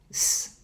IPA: s